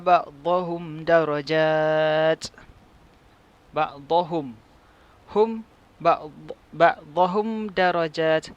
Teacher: mim mati berjumpa dengan dal, hukumnya adalah izhar syafawi, dibaca tanpa dengung.